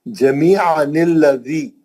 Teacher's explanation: गया, इधर का अलिफ हमजा बन गया, उसमें जबर आ गई, और अगर मिला के पढ़ेंगे तो दोनों अलिफ गिर गए